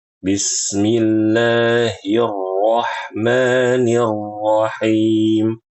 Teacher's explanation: Rnya itu tebal ya. Jadi ee perhatikan ketebalannya agar bagus bacaannya ya